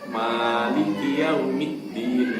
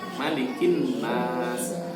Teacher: Kalau di huruf di surah Al-Fatihah itu kan memang dipanjangkan ma-nya ya. Kalau dalam surah An-Nas pendek ma-nya, malikin nas, bukan malikin.